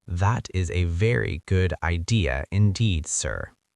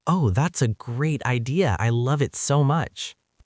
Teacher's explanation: You can hear the emotion and energy in the second version. Your voice went up and down, creating interest for the listener always. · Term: natural version